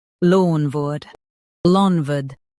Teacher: Lawn, wood, LOANWORD, lawn, wood, LOANWORD. Stress lawn and keep word soft.